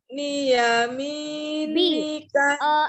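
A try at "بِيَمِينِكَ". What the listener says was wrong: Bukan ni. Bukan ni ya, bukan nun, hurufnya adalah ba. Ba. Hurufnya ba, titiknya di bawah ya, bukan nun. Bi.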